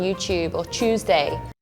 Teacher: Because we say like ch, this TU, we say it as like a ch sound